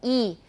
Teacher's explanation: The E sound is in the palatal area. It's high and it's around the hard palate